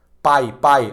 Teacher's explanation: tu não tá usando o nariz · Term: ditongo